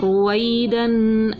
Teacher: 2 زبر کی تنوین تھی، غنہ کر کے پڑھا